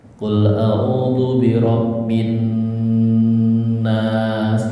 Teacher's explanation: maka al-nya lamnya enggak kelihatan langsung masuk huruf depannya